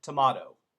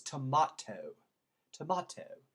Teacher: they make that last tea almost a d